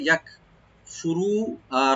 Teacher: মিলাবো, আই ইয়াকফুরু, আই ইয়াকফুরু, আই ইয়াকফুরু, ইয়াটা open রাখবেন, আর কাফে একটু হামস করতে হবে , ইয়াক ফুরু, রাটাকে ডিপ করে একালিফ টানবো আমরা, আই ইয়াকফুরু